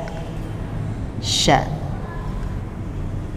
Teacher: huruf shin itu ada hembusan nafasnya